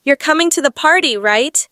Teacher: my voice Rises at the end signaling it's a question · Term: Rising intonation